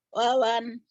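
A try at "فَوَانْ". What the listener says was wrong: Pantesan ketahuan. Papanya dibaca wawan. Itu dia penyakitnya.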